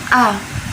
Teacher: Dia sifatnya jahar atau tidak mengalir nafas. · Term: alif